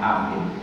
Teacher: ketika mau mengucapkan A itu nafas berhenti dulu kan baru bunyi kalau di apa dialirkan nafasnya enggak bisa jadi berhenti nafas dulu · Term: Hamzah